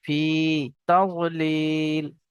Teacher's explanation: ফা ইয়া জের ফি, ইয়া সাকিনের পূর্বে জের এসছে, ইয়া মাদ্দা একালি পরিমাণ টান দিয়ে পড়তে হবে।